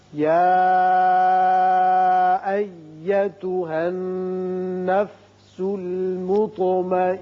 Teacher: نون پر شد ہے، یہاں غنہ کیجئے